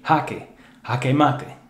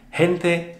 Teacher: it'd be softer more aspirate more breathy like an english h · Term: aspirate pronunciation